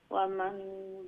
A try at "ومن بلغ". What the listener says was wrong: মান নুন হইতো না ওমাম